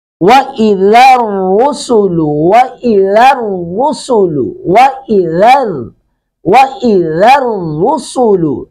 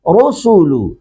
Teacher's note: را کو پر کریں گے، سین کو سختی سے ادا کریں گے سٹی کے ساتھ